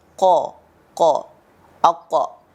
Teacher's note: sifat tebal itu atau isti'la yang kita sebut dalam ilmu tahsinul Quran, itu semuanya akan cenderung berbunyi vokal o